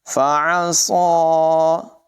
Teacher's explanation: عین کی آواز حلق کے درمیان والے حصے سے نکلے گی، صاد کو پور ادا کریں گے.